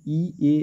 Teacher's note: প্রসারিত মানে ঠোটটা চওড়া। একদম পুরো প্রসারিত। যেমন ই এ উচ্চারণ করলে বুঝতে পারবে যে কতটা চওড়া হচ্ছে ঠোটটা।